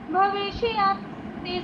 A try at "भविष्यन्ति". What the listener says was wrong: हमने बोलते हुए भविष्यन्ति नहीं बोलना, भविष्यन्ति, श की आवाज़ आधी, भविष्यन्ति, ठीक है।